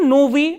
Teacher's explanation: unstressed hard ending adjectives for example novi as you can see the last syllable is unstressed